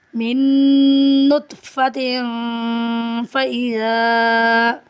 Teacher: پڑھیں گے، من نطفۃ فإذا، میم کو نون سے ملائیں گے، نون ساکن کے بعد نون مشدد ہے، غنہ ہوگا، 2 سے 3 سیکنڈ ناک میں آواز کو ٹھہرائیں گے